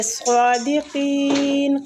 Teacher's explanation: صاد مستعلیہ حروف ہے، اس کو پور پڑھیں گے۔ · قاف بھی مستعلیہ، اس کو بھی پور پڑھیں گے اور اس پہ یا مد بھی ہو رہی ہے، ٹھیک ہے، قاف کے آگے یا مد بھی ہو رہی ہے۔